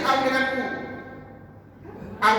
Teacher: sebutan waw dia guna bibir kita dimuncungkan